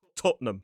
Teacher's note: It looks like Tottenham, but the pronunciation quite commonly is two syllables. Stress on the first